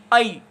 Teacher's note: जो आई है, अब इसका उच्चारण अ और ई, आई ऐसा होता है